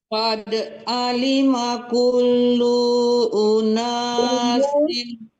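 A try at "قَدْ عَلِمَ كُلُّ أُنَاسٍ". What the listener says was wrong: Lu-nya jangan tertahan, tidak panjang. Hati-hati di mana yang nggak panjang agak dipercepat. Qad alima kullu unasin mashrabahum.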